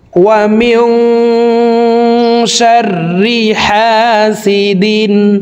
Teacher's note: এই তানউইন ওয়ালা দালটি গুন্না ছাড়া স্পষ্ট করিয়া পড়ব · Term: ইজহার